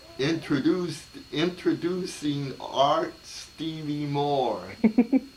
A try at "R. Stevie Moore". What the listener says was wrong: Wait, it's not Art. It's R.